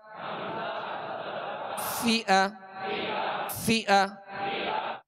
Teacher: ऊपर के जो दो सामने वाले दांत हैं इसके किनारे और निचले होंठ का तर हिस्सा, ये मखरज है, ये निकलने की जगह है फा के। फा जेर फी, हमजा जबर अ, फी अ, फी अ।